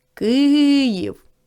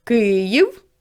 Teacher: в слові Київ наголошений перший склад